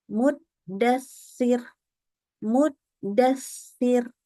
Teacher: Kita membaca huruf sa dari tempat keluar huruf sin